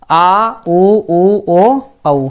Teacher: जिन स्वर के उच्चारण में जीभ का पिछला भाग ऊपर उठता है पश्च स्वर कहलाते हैं